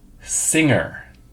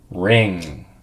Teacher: I can see the back of my tongue going up to reach the back of my mouth. · the back of our tongue is rising up to the back of our mouth. You see here, we go, You hear how the tongue is not going up like it was in the N sound.